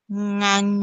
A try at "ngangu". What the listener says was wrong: Il faut lever le dernier ton, c'est O. Oui, j'ai dit qu'il faut lever, c'est le ton O.